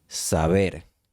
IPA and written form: sa'βeɾ (saber)